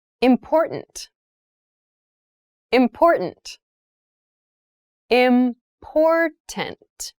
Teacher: The pronunciation of this word, that first T, is actually reduced. It sounds more like a D in fast speech.